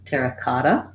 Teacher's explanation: Visualizing it as the ah, either AH or A, might help you change over and make sure that you get that correct pronunciation, terracotta. These two T's go together like a D sound or a flap T, kata, not kata, but kata, terracotta.